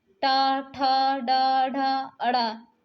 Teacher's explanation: टा का उच्चारण आप कर रहे हैं तो जीभ मूर्धा यानी मुंह के ऊपर हिस्से में मुड़ रही है।